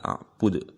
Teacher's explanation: Yang terakhir itu qalqalah, bacaannya memantul.